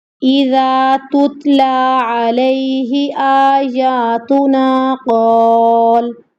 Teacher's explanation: تا کو تا کے ساتھ ملاتے ہو، یہاں پہ ہمس ہو رہا ہے، لام کو کھینچنا ہے، کھڑی زبر کی حرکت ہے.